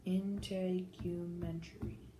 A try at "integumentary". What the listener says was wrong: Yeah, and you kind of made the U long, didn't you? I think, so I'm not familiar with this word, but I'm thinking the long U sounds better. Integumentary.